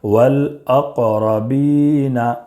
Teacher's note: قاف میں قلقلہ ہوگا اس لیے کہ حروف قلقلہ کے 5 حروف میں سے قاف ہے، قطب جدن کے 5 حروف میں سے قاف ہے، اس لیے قلقلہ کریں گے۔ والاق، اور با میں یا مدہ ہے اس لیے کہ الف کے برابر کھینچ کر پڑھیں گے